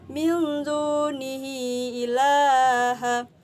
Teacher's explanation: Di situ karena ada hak domir bertemu dengan hamzah dan membacanya dengan cara panjang seperti 2,5 alif atau 5 harokat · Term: mad sila tawilah